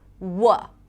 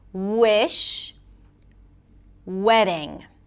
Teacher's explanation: W technically the back of the tongue goes up as well. Wy no friction. You can't hear the vibrations.